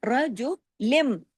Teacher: را ہیوی ہوگا زبر کی وجہ سے